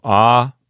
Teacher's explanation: If that were a Latin word, that's how we would divide it into syllables. Keep in mind that that first syllable doesn't have a consonant sound starting it. There's no consonant there to start off the sound of the letter A.